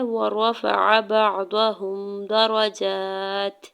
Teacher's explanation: وَرَفَعَ بَعْضَهُمْ دَرَجَاتٍ حرکات کو بغیر کھینچے ہوئے ادا کرنا ہے. درجات میں جم کے اوپر کھڑا زبر ہے, دو حرکت کھینچ کے ادا کریں گے تاکہ نیچے دو زیر کی تنوین ہے اور آگے وقف مطلق ہے تو یہاں پہ وقف کرنے کی صورت میں تا کو ساکن کرتے ہوئے ہمز کریں گے.